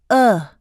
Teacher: positioning the tongue in the middle of the mouth the jaw is in a partially open position the tip of the tongue is positioned behind the lower teeth the lips are unrounded the uh is lacks so it is short in duration just